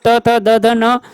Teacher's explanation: Next, त वर्ग की ध्वनियों का उच्चारण स्थान है, तो ये आपका है दंत्य। त वर्ग में त, थ, द, ध, न ध्वनियों का उच्चारण स्थान दंत्य है